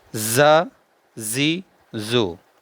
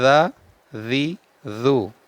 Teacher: زا کو سیٹی کے ساتھ پڑھنا ہے، زا، زی، زو، اور زال کو بغیر سیٹی کے پڑھنا ہے